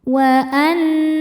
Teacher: Karena nun bertasydid. Cara membacanya berdengung. tahan dengungannya kurang lebih dua harakat. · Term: gunah musyaddadah